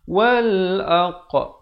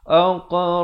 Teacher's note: Di sini diberikan lantunan qalqalah sughra.